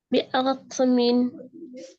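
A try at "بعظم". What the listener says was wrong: ज़ा को मोटा करना है, और हिलाना भी नहीं है। बिअज़्मिन।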